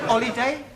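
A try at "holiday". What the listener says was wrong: you keep dropping your aspirat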